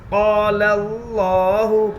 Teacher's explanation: لفظ اللہ کے لام سے پہلے زبر ہے اس لیے لفظ اللہ کے لام کو پور پڑھیں گے. لام کے اوپر تشدید ہے تشدید والے حرف کو 2 مرتبہ پڑھتے ہیں ایک بار پہلے حرف سے ملا کر اور ایک بار خود سے.